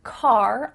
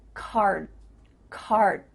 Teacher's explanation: D sound but your mouth is making that shape card card my tongue is flat against the roof of my mouth to make the D but it's not coming out